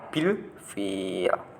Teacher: Nah, itu nanti dibaca idhar qomariyah atau lamnya kelihatan atau muncul.